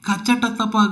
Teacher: ಕಚಟಪಗಳನ್ನು ಉಚ್ಚರಿಸಿದಾಗ ಯಾವುದೇ ಅಂತಹ ಘೋಷ ಹೊರಡುವುದಿಲ್ಲ ಆದ್ದರಿಂದಲೇ ಅವು ಅಘೋಷ ವ್ಯಂಜನಗಳು